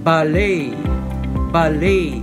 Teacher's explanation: In British English, the word would be pronounced ballet, ballet, with stress on the first syllable. Americans would pronounce the word ballet, ballet.